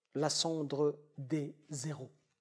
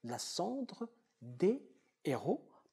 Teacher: Le H empêche, dans cet exemple second, le H empêche l'association ou la liaison consonne-voyelle, parce qu'on ne prononce pas ici la cendre des zéros. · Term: H aspiré